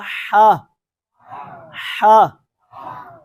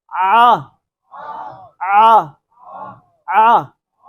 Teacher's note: ये वाला आइन और हा जो है ये हलक के दरमियान वाले हिस्से से अदा होता है